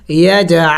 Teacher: عین زبر ع. عین حروف حلقے میں سے ہیں، حلق کے درمیانی حصے سے ادا کریں گے